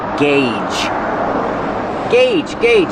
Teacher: Use the hard g and the long A, like say and pay.